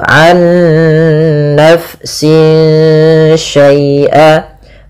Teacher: Nah, ada bacaan idgham bi gunnah, yang dimana dia di sini kita harus membacanya nunnya masukkan ke nun kedua dan disertai dengan gunnah. Nah, kesalahan yang terjadi tidak menahan gunnahnya, an nafsin langsung, tapi benar ditahan dulu, an nafsin syai'a.